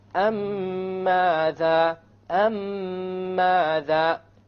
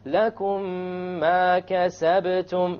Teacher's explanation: You have a ghunna on the meme, and you will make the merging or the idgham, and there will, in the Quran it will be written with a shadda, so you will even know that there will be a merging here. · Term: idgham shafawi